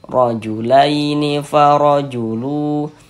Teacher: Maka dia dibaca dibaca tafkhim. Baca tebal sehingga pangkal lisan kita naik terangkat ke atas ketika kita mengucapkannya.